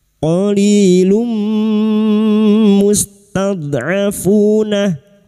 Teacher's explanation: Nun mim wau termasuk huruf mim masuk dengan mendengung. masuk pada huruf mim dan mendengung selama tiga harakat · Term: idgham bighunaah